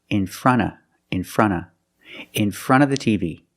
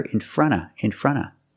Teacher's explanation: the NT in front is between vowels so you don't really hear the T you hear in front in front and because you have a